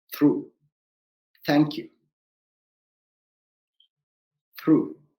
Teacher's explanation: you do not feel any vibrations in your throat just a passing of air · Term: voiceless th